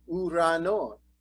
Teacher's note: And we take a look at uranon, and the accent is on non. So non gets the highest note.